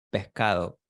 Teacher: They aspirate the S. · Why do I hear an H instead of an S? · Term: S aspiration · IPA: [peh'ka.ðo]